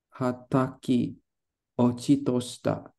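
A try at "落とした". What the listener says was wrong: Otoshita. You're thinking about ochiru, but ochiru, the chi, oh sorry, ochiru, the chi is after the o. So that kanji right here is only pronounced as o.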